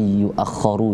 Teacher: di situ ditahan huruf kho-nya karena ada tasydid